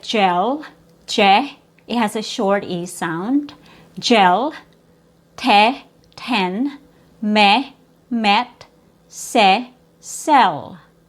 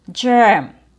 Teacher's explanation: when there's an R after the E, the vowel sound changes, and now it becomes a schwa+r